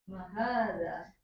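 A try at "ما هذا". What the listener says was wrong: Ma-nya panjang.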